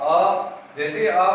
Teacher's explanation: अ का उच्चारण करो आप, अ जैसे अ का उच्चारण करते हैं अपन गले से अपने कंठ के यहाँ से आवाज आती है